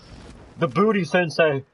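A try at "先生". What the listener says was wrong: You said the booty sensen? It's sensei. You said sensen.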